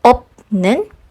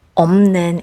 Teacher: So maybe you're going to ask, since it comes from the word 없다, why is it not pronounced as 없는? In this word, the second syllable begins with a nasal sound, n. So it will be easier if the sound prior to it will also be pronounced nasally. So instead of saying op, 는, you say 없는 instead for ease of pronunciation.